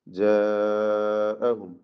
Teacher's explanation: ഐമാനിഹിം ലഇൻ ജാഅഹും നദീറുൻ ലയകൂനുൻ ജാഅഹും ഈ ദീർഘം മദ് മുത്തസിൽ വാജിബാണ്. നിർബന്ധമായും 4-5 ഹറക്കത്തിന്റെ അളവിൽ അലിഫിനെ ദീർഘിപ്പിക്കണം. പദത്തിന്റെ അന്ത്യത്തിൽ വരുന്ന സാക്കിന മീം ഇൽഹാർ ഷഫവി മണിക്കാതെ വെളിവാക്കി ഉച്ചരിക്കണം.